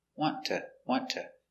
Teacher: when you have a t and t together the t is silent so and you pronounce ta with a t sound want to